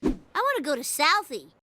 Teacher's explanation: I want to turns into I wanna. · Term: connected speech